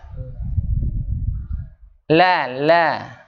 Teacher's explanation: Ujung lidahnya lekat, Pak. Lekat pada gusi atas ya. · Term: huruf lam